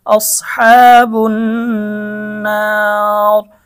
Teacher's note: এখানে ওয়াকফ করার কারণে মধ্যে আরজি হয়ে যাবে, মদের হরফের পরে ওয়াকফ করলে মধ্যে আরজি 3 আলিফ টান।